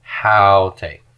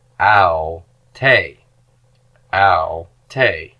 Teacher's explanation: Haute. For the pronoun she, smooth breathing, and the accent is not on the first syllable, but on the second one.